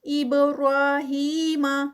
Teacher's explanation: با کا قلقلہ، را پہ 2 کاؤنٹس، ہی پہ 2 کاؤنٹس